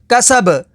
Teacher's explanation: وقف تام کی وجہ سے با کو ساکن کر دیں گے. با حروف قلقلہ میں سے تو یہاں پر قلقلہ ہوگا